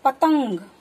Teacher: अंग के उच्चारण में नाक द्वारा झटके के साथ उच्चारण करते हैं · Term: अनुस्वार